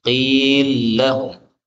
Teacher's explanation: lam ketemu lam, ini boleh dibaca dengan idgham